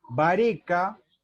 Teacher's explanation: Forma con síncopa, o sea, con una pérdida de sonido en el medio